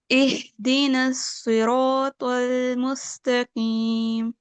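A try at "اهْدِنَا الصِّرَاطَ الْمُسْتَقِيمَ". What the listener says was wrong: ماشاء اللہ, لا حول ولا قوة الا باللہ. Give yourself a star now. This time you read it, یعنی the best of all.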